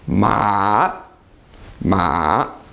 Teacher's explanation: this is a tone that goes down down and then back up again